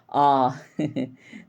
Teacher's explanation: तो यहाँ पे आप एक बार उच्चारित करके देखिए ना, आपको खुद ही पता चल जाएगा। आ, है ना, बोलेंगे तो जैसे लगेगा कंठ के नीचे से आ रही है आवाज़, आ। तो इसको हम पश्चिम स्वर बोल देते हैं।